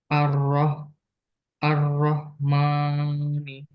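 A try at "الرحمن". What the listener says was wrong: Nah, haknya lebih jelas lagi. Ar-Rahmani.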